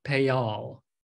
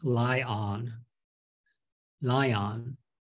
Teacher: When the first word ends in an A, E, or I, or these sounds like a Y makes, your lips are wide. You insert a Y sound in there in order to be more fluent. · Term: little Y